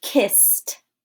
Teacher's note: We don't need our vocal cords to say that s sound. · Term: unvoiced consonant